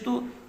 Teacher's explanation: پیش کو جلدی پڑھیں تھوڑا بھی نہ کھینچیں، معروف پڑھیں، مجہول آواز سے بچیں